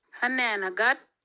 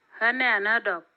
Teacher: We can see that the preceding suffix vowel is now long and it has a rising tone.